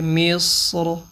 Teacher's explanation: اچھا، یہ را ساکن ہونی چاہیے تھی، یہ زیر لگی ہوئی ہے، مصر۔ تو وقف یعنی کریں گے اس پہ تو را موٹی کریں گے